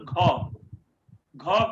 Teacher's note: घ बोलने के लिए हमें ज्यादा प्राणवायु की जरूरत पड़ती है, तो ये महाप्राण हो जाए